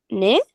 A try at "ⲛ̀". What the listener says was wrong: N. So if there's a jenkim, it's an N, not a ne. So the E comes before the vowel, or the consonant. So the N.